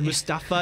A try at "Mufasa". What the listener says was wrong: Mufasa, there's no T here. You said Mustafa.